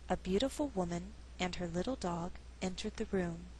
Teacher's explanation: it's possible to pause after woman and before dog and still sound natural